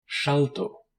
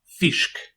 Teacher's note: It represents an unvoiced post-alveolar or alveolo-palatal fricative, like the SH in she.